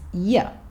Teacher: 'you', when said quickly, is 'yə', with the schwa sound.